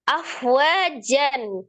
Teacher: Sebelumnya kasrah, maka dibacanya tipis nillahi. Afwajan, fa sukun, roqah ya dibacanya, dialirkan seperti meniup